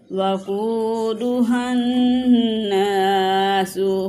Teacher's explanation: فَاتَّقُوا النَّارَ الَّتِي وَقُودُهَا النَّاسُ قاف کو کھینچ کے پڑھیں گے، واؤ مدہ ہے، اور ہا کو نون کے ساتھ ملائیں گے، نون مشدد ہے، یہاں پہ غنہ ہوگا۔